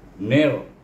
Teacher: kita idghamkan huruf ni kepada huruf ra, bunyinya nir. Nir, ingat tu, iaitu apabila kita menyebut huruf ra, iaitu hujung lidah kita bertentangan dengan gusi atas gigi kacip.